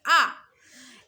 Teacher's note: জিভের অবস্থানটা আমার মধ্যে, এবং দেখেন ঠোঁটটা আমার পুরোই খুলে গেছে